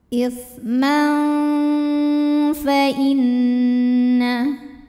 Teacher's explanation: Karena ada tanwin fathah menghadapi huruf fa. Maka cara membunyikannya, bunyi tanwinnya samar-samar. Kita siap-siap ke makhraj huruf fa disertai bunyi dengung. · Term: ikhfa awsat